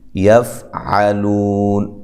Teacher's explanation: فا کو ہلانا نہیں ہے، لو واو مدہ ہے، عین کو واضح نکالنا ہے